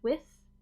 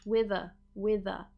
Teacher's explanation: with a consonant after will be an unvoiced th with but when we link it it becomes a voiced th